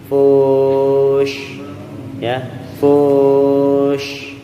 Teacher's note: Bunyinya harus desirannya lebih besar karena huruf shin adalah huruf tafashi alias desirannya deras